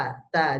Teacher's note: Kalau ta itu ditiup, ta ditiup, jadi anginnya sedikit keluar.